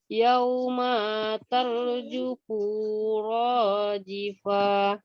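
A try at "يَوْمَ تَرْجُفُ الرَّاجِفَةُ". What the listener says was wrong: Yauma tarjufur rajifah, maknya pendek.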